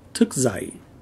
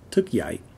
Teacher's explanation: The non-crossed D is pronounced like a Z in Northern dialect and like a Y in most of the South.